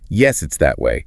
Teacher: emphasizing that to show the direction. Yeah, stressing demonstrative pronouns like that helps make it clear what you're referring to.